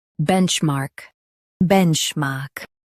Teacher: Stress bench and keep mark strong.